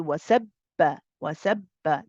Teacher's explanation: The ba is a qalqala letter, but because of the shadda on it, because of this W sign on it, and because it's joint and then followed by a haraka, we don't need to do the bouncing. We don't say wasababa.